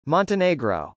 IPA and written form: mˌɑntənˈeɪgrə (montenegro)